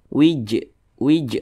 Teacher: ini huruf Jim dia sukun Nah berarti cara bacanya dipantulkan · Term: Qalqalah